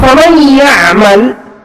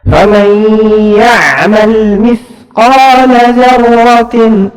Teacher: ada gunnah yang harus keluar lewat hidung 2 harakat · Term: idgham bi gunnah